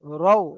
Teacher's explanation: র ওয়াও জাবার রও, রাও হবে না, কারণ এটা পুর অক্ষর। ফটা হলো পুর অক্ষর।